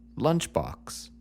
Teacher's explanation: take lunchbox for example okay mhm it's not just any box it's a box that you carry your lunch in so we need to put the emphasis on lunch